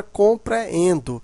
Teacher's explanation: são duas vogais juntas porém em sílabas separadas existe um encontro né das duas porém elas estão em sílabas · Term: iato